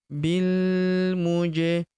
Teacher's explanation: huruf ja berharakat sukun kita pantulkan atau kita qalqalahkan